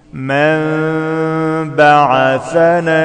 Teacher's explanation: عند ميم الإقلاب فيها غنة حركتين